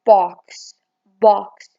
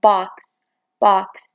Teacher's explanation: in american or general american english this vowel sound is replaced with ah the back unrounded vowel